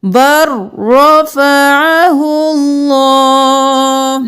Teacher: با رو کے ساتھ ملانا ہے لام کو چھوڑ دینا ہے بر رفعه اللہ.